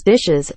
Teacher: in plurals such as dishes, a vowel is added before the S